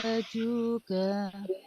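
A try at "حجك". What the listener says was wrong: Ah, ibu kurang penekanan ke huruf jimnya. Hajuka.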